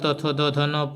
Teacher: त वर्ग दंते हैं, दांतों का स्पर्श करते हैं।